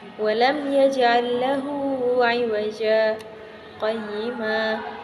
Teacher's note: Pada bab selanjutnya yaitu pembahasan tentang saktah. Saktah yaitu berhenti kira-kira 2 harokat tanpa bernafas dengan niat melanjutkan bacaan